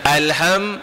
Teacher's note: kalau tuan-tuan sebut huruf nun, sebut huruf mim memang ada rasa macam berangin sikit hidung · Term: dengung asal